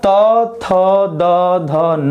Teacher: तो आपकी जीभ जा करके आपके दांतों का स्पर्श करेगी, चाहे दांत जैसे भी हो। तो इसमें हम क्या देख रहे हैं कि त, थ, द, ध, न ये दंत से बोले जाएंगे, दांत से बोले जाएंगे।